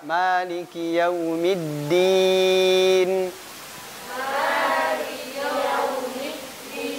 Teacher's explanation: Maliki yaumiddin, naikkan lidahnya. Sepanjang kita memanjangkan ya matnya itu lidah naik. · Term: ya maddiyah